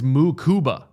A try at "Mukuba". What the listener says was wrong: Mukuba. You put the emphasis on the ku, but it's a mu, not a ma. Mukuba.